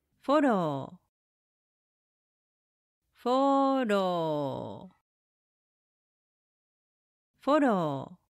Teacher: The Japanese R is closer to a blend of L, D, and a soft R. The tongue lightly taps the ridge behind the upper teeth, more like the start of dog or light in English · It's quick, flicking touch, not like the R sound where the tongue doesn't even touch anything. And remember, the O is elongated. Keep it going for two beats. Finally, the pitch accent starts high, then drops on the second mora, and stays low.